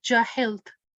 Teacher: if you do waqf, you will not pronounce the dhamma. It will change into a sakin letter. So it will be jahilt.